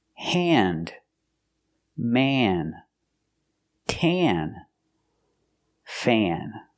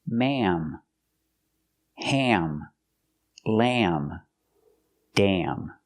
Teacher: different sound it makes this sound an not a but an it's more in your nose and it's a little longer so it's more nasal and it's a little longer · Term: short a